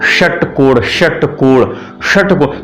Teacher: जीभ हमारी ऐसे फोल्ड हो के जहां ऊपर तालू के और पीछे जो गड्ढा सूखा सा स्थान होता है वहां टच करती है उस स्थान का नाम है मूर्धा तो जब वहां से उच्चारण होता है।